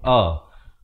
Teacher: Jadi pastikan lafaznya itu hamzah di pangkal kerongkong a